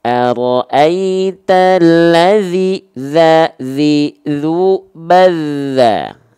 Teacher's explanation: pastikan ketika kita melafalkan zal di sini, pastikan dia mengalir suaranya